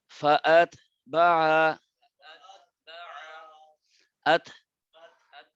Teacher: এই তা পড়ার সময় একটু বাতাস বের হবে।